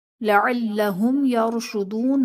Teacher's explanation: یرشدون میں را ساکن سے پہلے یا پر زبر ہے تو یہاں پر را کو پر کریں گے یعنی موٹا کر کے پڑھیں گے · میم ساکن میں غنہ نہیں کریں گے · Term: اظہار شفوی